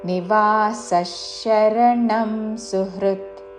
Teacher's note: విసర్గ తర్వాత తాళవ్య తో పదము ఉన్నది కాబట్టి విసర్గ ఉచ్చారణ ష